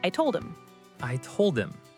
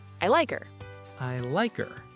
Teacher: In fast conversation, we often drop the H in pronouns like him, her, and his.